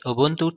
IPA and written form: ʊˈbʊntuː (Ubuntu)